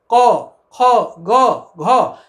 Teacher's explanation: जीभ के 3 हिस्से हैं, मूल, मध्य और अग्र। तो जब हम क बोलते हैं तो हमारी जिह्वा मूल यानी जिह्वा का पीछे का हिस्सा है वो थोड़ा सा पीछे खसकता है और हमारे कंठ को स्पर्श करता है, यानी कंठ को ब्लॉक करता है।